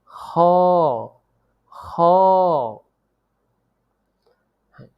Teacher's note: কণ্ঠনালীর শেষ হইতে উচ্চারিত হয় খ